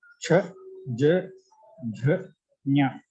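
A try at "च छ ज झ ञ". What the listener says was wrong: उत्तमम् धन्यवादः महोदय.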